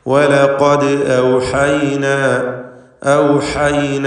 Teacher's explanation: ദാലിൻ്റെ സുക്കൂൻ ഖൽഖല സുഗ്റ നൽകി ശബ്ദം ഹറക്കത്ത് പോലെ ചലിപ്പിക്കേണ്ടതാണ്.